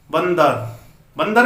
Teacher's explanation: बंदर में क्या हुआ? न की ध्वनि निकली है, न की निकली ना, जबकि न इसमें लिखा हुआ नहीं है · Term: अनुस्वार